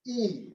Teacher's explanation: It is the I with a lowercase I, and it is plus high, plus front, plus tense, minus round.